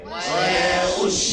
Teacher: قل إنما أدعو ربي ولا أشرك الشين اللي فيها شنشنة هي التفشي اللي في الشين انتشار الهواء الريح اللي في الفم